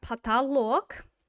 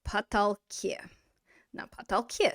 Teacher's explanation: So we've got потолок. And we're going to lose that o, and it's going to go to потолке. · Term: fleeting vowel